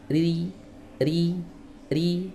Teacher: Baik, berikutnya kita masuk ke huruf ro ya. Huruf ro keadaan kasrah harus dibaca tipis